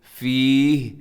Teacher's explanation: وقف کریں گے تو فیہ، ایسے آخر میں ہا ساکن ہو جائے گا